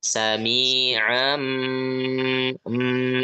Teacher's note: dengan gunah yang dipanjangkan temponya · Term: iqlabnya